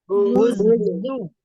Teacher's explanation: Ketika berharokat, zu, sopirnya tetap nampak ya.